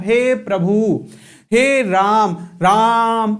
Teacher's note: तो जब हम उस वर्ड को खींचते हैं वही कहलाता है प्लुत स्वर। मतलब जिसके उच्चारण में दीर्घ स्वर से भी ज्यादा समय लगता है वो कहलाता है प्लुत स्वर।